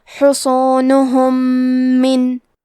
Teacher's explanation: یہاں بھی حکم ہے ادغام متماثلین صغیر، تو ہم میم ساکن کو دوسرے میم میں ملا کے ایک ہی میم غنہ اور تشدید کے ساتھ پڑھیں گے.